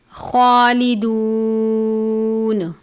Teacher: خوا کو پر پڑھتے ہیں، کھڑی زبر ہے، ایک الف کی جتنا لمبا کریں گے